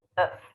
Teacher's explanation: Now, what happens here is that instead of pronouncing a vowel that is this long, if, you pronounce a vowel that is just shorter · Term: schwa sound